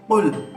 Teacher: Nah, di sini qul itu qaf. Jadi ada di sini di tenggorokan ya, di leher.